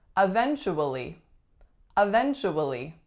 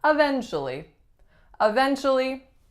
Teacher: we are taking out a syllable and we are saying eventually